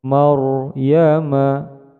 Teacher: ro disukunkan dibaca tafhim atau tebal